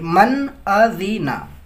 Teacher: یہاں پہ نون ساکن کے بعد حمزہ حروف حلقی میں سے ہے تو یہاں پہ اظہار کریں گے